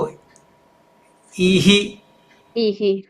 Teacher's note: એનું વિસર્ગનું ઉચ્ચારણ સ્થાન કંઠની જગ્યાએ બદલાઈને ક્યાં જતું રહેશે તાલુમાં જતું રહેશે તાલુમાં બરાબર એ રીતે એ રીતે આપણે ઉચ્ચારણમાં પણ ભેદ આવશે